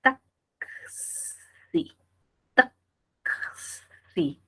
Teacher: Ah, entonces acá hay dos fonemas, la K y la S. Entonces la escritura, la transcripción fonológica es con K y con S.